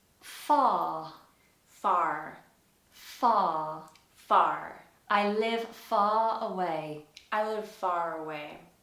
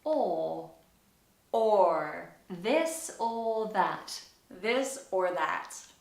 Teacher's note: Firstly, and most famously, one of the biggest differences between American English and British English is the R sound. In British English, as I'm always telling you on my videos, we have to flatten the R. And in most cases, we ignore it all together if it's not at the beginning.